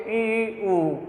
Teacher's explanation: ई ऊ का उच्चारण हम करते हैं मुख बंद की स्थिति में, मुख बंद।